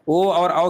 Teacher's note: ओ और औ की बात करेंगे तो कंठोष्ठ में आता है।